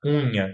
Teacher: Unha, que não fala unha, né? É unha, com o U já sendo produzido com uma certa nasalidade